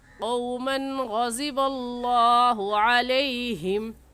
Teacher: लफ्ज़ अल्लाह को पुर यानी मोटा करके पढ़ेंगे, और मोटा करने का तरीका दोनों होंठ گول ہو جائے · इस तनवीन पर गुन्ना नहीं करेंगे बल्कि जल्दी से पढ़ जाएंगे